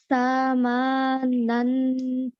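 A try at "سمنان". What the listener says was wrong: Very nice. Just try not to make the tha and the ma too long. Okay. Just only one count.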